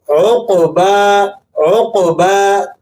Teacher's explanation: صحیح طریقہ یہ ہے، قاف پر سکون ہے تو اس کو آپ نے واضح موٹا کر کے جب قاف کو پڑھیں گے اور اس کے آخر میں جو با ہے اسے آپ نے کھینچ کر تھوڑا سا لمبا کر دینا ہے ایک الف کے برابر